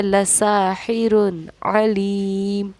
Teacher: सीन को जब हम पढ़ते हैं तो सीन के पढ़ने में सीटी होती है